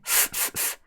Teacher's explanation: the last sound in laugh is f, which is unvoiced